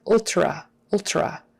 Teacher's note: that tr is often pronounced more like a chr because doing a proper t is a little trickier ultra ultra typically in regular conversation people will turn that t